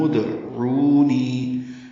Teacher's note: ادعونی ہے، میم کو دال سے ملا دیں گے. یہ ادعونی کا حمزہ عارضی ہے، دال ساکن پہ قلقلہ ہوگا. ربکم ادعونی، عو واو مدہ ہے، دو حرکات لمبا کریں گے.